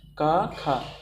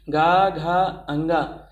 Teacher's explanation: जब हम का और खा बोलते हैं तो हमें जो है घोष नहीं होता, कंपन नहीं होता, का खा। लेकिन जब हम गा घा अंगा बोलते हैं तो आवाज़ कंठ से तो निकल रही है लेकिन थोड़ा तेज निकल रही है, उसमें कंपन हो रहा है, गा घा अंगा। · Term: अघोष